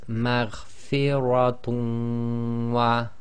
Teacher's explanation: we drop the nun sakin in the dhammatain and we read the waw as if it's got a shadda, and we do ghunna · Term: idgham